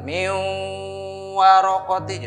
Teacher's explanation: Karena hukumnya idgham bigunnah maka dibaca min warokoti. Jadi lebur suara nunnya, langsung ditasdid ke waw karena dimasukkan kan idgham itu. Nun sukun, suara nun sukunnya seolah tidak dibaca ya, dan wawunya bertasdid karena tasdid double ya, kayak dua ini hurufnya.